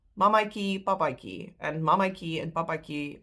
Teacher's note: That last a is pronounced I.